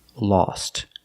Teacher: The O is pronounced with the aw sound, like saw and all, lost.